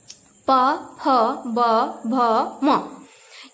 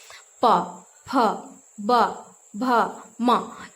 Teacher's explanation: अगर आप प बोल रहे हैं तो आप देख रहे हैं कि जो आपका दोनों होठ है एक दूसरे से सट रहा है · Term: प वर्ग